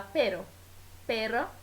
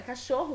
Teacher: se escreve com dois r e se vibra ainda mais a língua